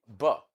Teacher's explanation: two lips are touching each other. That is why we call that sound a bi active articulator.